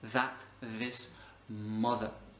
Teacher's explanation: on met la langue un peu plus proche on utilise ses cordes vocales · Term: le son th